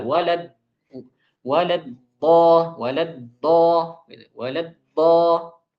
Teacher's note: Jadi sebagian orang ada yang mengeluarkannya dengan dal yang tebal.